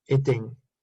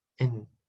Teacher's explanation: Que se note mucho que es en y no eng.